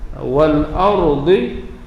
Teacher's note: Jadi ayat di atas kita dah jumpa as-samawati wal ardh, alif lam pada as-samawat, alif lam asy-syamsiyah, wal ardi alif lam al-qamariyah, ra dibaca dengan tebal.